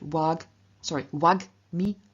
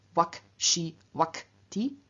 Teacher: In front of a voiced consonant, it appears as velar voiced g. In front of unvoiced consonants, it appears as velar unvoiced k